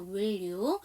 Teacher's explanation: will 다음에 you니까 연음시켜서 will you.